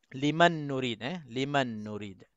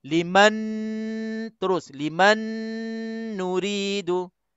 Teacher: Setengah ulama tu mengatakan nun mati bertemu dengan nun ni idgham kamil juga. Jadi kalau kita baca, kita kena nun ini terus masuk ke dalam nun.